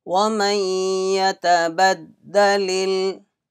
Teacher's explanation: Ya came after Nun Sakin, there will be Idgham Naqis.